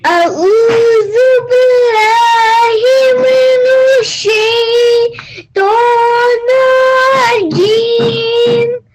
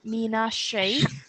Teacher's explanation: we have to make sure that the Noon and the Sheen are joined rather than the Noon being said separately and the Sheen being said separately